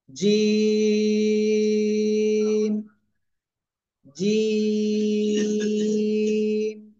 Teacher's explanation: জিব্বার মধ্যখান বা জিব্বার মাঝখান, তার বরাবর উপরে তালুর সাথে লাগাবো, লাগিয়ে আমরা 3 আলিফ টেনে উচ্চারণ করবো। একটু শক্ত আওয়াজে হবে উচ্চারণ।